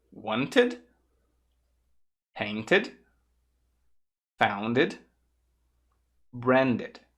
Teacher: você vai ter que colocar um som de id, porque ficaria ruim de conectar se fosse só um som de T ou só de D.